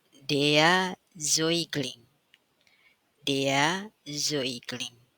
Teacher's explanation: vokal a umlaud dengan vokal u ini juga dibaca oi